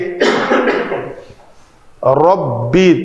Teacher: ربی، یہ کلمہ اسی پیٹرن پہ ہی رہے گا، تجوید کے اعتبار سے ربی، را کو پر پڑھیں گے، رب بھی نہیں کریں گے، چپٹے ہونٹ کر کے را پتلی ہو جائے گی۔ ربی، ہونٹ اوپر کی طرف اٹھے گا اوپر والا تو را پر ہوگی۔